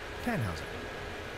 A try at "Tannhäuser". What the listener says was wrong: We pronounce it Tannhäuser with an umlaut.